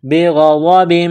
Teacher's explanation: غین گلے سے بلغم نکالنے کی طرح اس کو پڑھیں گے ، غاد کو موٹا کرنا ہے، بغضب، با کے نیچے 2